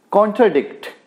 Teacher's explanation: contradict में 3 syllables हैं दोस्तों। First 2 unstressed हैं और last one stressed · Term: anapestic